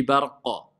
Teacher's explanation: c'est al-qalqala kubra. C'est la grande résonance si je m'arrête sur le qaf. C'est quoi les lettres qui sont concernées par le qalqala?